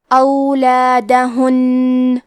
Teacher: کلمت اولادہن میں نون پہ تشدید ہے، تو ہم 2 حرف کے برابر نون کو پڑھیں گے اور تشدید کو غنہ کے ساتھ ادا کریں گے